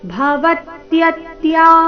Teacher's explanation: ಆಘಾತಗಳ ಮೇಲೆ ಗಮನ ಎರಡನೇ ಮೂರನೇ ಅಕ್ಷರದ ಮೇಲೆ ಆಘಾತ ಈ ಶಬ್ದದಲ್ಲಿ